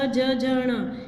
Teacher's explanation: जो टंग है हमारी वो तालू पर टच होती है, जीभ हमारी तालू से टच होती है